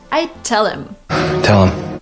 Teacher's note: There is no like stress in every single word. So when these words go unstressed, people tend to just omit the letter H and the sound that it corresponds to